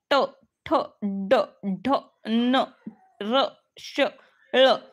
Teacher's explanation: म्हणजे मूर्धा मूर्धा जी आहे आपली कंठ आणि टाळू जो आहे कंठ आणि टाळू हे दोन बघितलं ना याच्या मधली जागा जिथे आपली जीभ टच होते ना त्याला मूर्धा म्हणतात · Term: मूर्धन्य